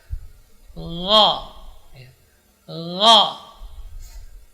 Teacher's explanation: huruf gha keluar dari ujung tenggorokan, mengalir, tidak boleh tertahan, bukan go ya, jadi mengalir, yang mengalir suaranya, bukan huruf hamas, jadi tidak ada udara yang keluar.